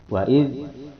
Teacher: za ini memiliki sifat istifal, dalam arti pangkal lisan tidak diangkat ke atas. Wa idz, pangkal lisan yang dekat tenggorokan di bawah, istifal. · Kemudian yang keempat, za memiliki sifat infita, dalam arti depan lisan juga tidak diangkat ke atas. Wa idz, hanya ujung lisan yang ke atas mengenai ujung gigi seri yang atas. Beda ya, depan lisan dengan ujung lisan.